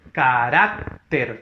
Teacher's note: Carácter, fuerza de voz en la ra